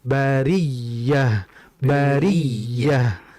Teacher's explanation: Jadi ada penekanan di bagian akhir untuk menunjukkan adanya tasid pada huruf ya. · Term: annabr